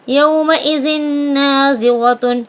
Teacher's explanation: یہاں تنوین کے بعد نون آیا ہے تو غنے کے ساتھ ملا کر پڑھیں گے